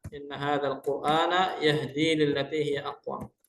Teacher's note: R sukun sebelumnya dumah wajib dibaca tafkhim, tidak boleh dibaca tarqiq.